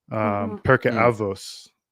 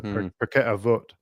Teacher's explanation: in Ashkenazi accent we pronounce the tav with no dagesh as an s sound